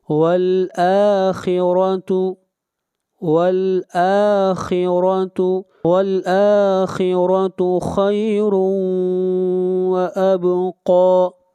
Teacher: حمزہ کو کھینچ کر پڑھیں گے ایک الف کے برابر